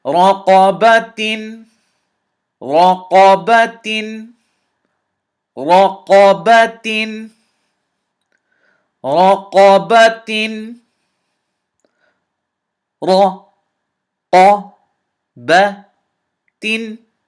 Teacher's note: Ra is heavy, qaf is heavy, ba is light, ta is light.